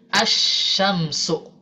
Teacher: ketika bertemu dengan huruf syim maka wajib diidghamkan jadi asyamsu